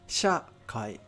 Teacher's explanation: shakai, it has an accent, right, on sha.